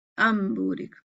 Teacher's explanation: اکفا کا مطلب ایسے ہی ہوتا ہے کہ ہم میم کو با سے چھپا رہے ہیں، میم کے الفاظ کو، میم کے مخرج کو چھپا رہے ہیں · تو نون کی آواز کو کیا کر دیتے ہیں، میم میں بدل دیتے ہیں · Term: اقلاب